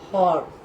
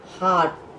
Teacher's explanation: यह ध्वनि आ तथा ओ, ध्यान दो बच्चों, आ तथा ओ, यह ध्वनि आ तथा ओ के बीच की है, इसलिए हिंदी में इसके शुद्ध उच्चारण तथा लेखन के लिए अर्धचंद्राकार नामक चिन्ह विकसित किया गया है।